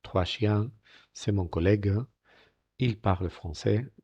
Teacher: fijaros las consonantes finales no se pronuncia